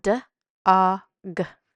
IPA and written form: d ɔ g (dog)